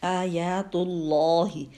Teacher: یہاں پہ اللہ کے نام سے پہلے تا کے پر پیش ہے تو یہ لام موٹا پڑا جائے گا، اللہ کا لام.